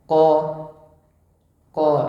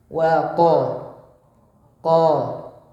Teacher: Pangkal lidah paling belakang pada posisi menempel langit-langitnya. Ya, langit-langit yang lunak. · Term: huruf qaf